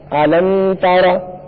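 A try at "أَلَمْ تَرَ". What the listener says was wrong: اس میں غنہ نہیں کریں گے. الم تر، قاعدہ کون سا ہو رہا ہے؟ اظہار شفوی. کس طرح ہو رہا ہے قاعدہ اظہار شفوی؟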